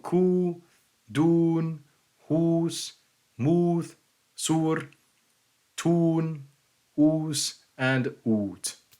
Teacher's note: So here we have long U, and this should be pretty easy. It's just an oo sound, as in German gut, or as in English food, or English rune, or as in English rule.